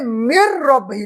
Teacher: اس نون ساکن کو نہیں پڑھیں گے چونکہ قاعدہ یرملون یہاں پہ جاری ہوگا، تو یہ میم کو رے سے ملا دیں گے